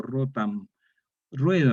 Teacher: la O es tónica abierta, diptonga en wo, ue, y hay una T sorda intervocálica, rotam, y da D, entonces va a quedar rueda.